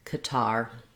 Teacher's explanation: That was with second syllable stress